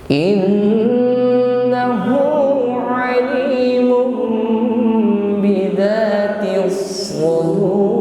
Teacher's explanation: Ra bersukun, sebelumnya ada harokat dhammah. Sudur, berarti ra-nya harus tafkhim, tebal.